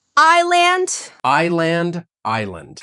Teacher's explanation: Completely silent. So we don't say is land. We say I land. The first sound is like your I.